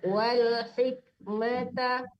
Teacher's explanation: Benar-benar mati lam jangan dipantul seperti huruf qalqalah ya.